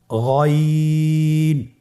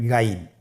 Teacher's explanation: গইন হরফটি উচ্চারিত হয় কণ্ঠনালীর শেষ ভাগ হতে।